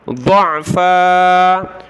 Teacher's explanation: ضاد کو موٹا کر کے عین کے ساتھ ملائیں